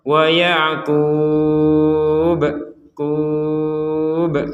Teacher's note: huruf ba-nya ini karena kita berhenti ya di sini, maka ini menjadi huruf yang dipantulkan. Kalau kita tidak berhenti, maka tidak ada pantulan sama sekali.